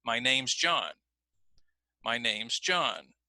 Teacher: I'm not gonna say name is I'm gonna say names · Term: link